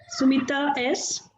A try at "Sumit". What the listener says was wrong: It is not Sumita, it is Sumit. Basically, I think you read it Sumita.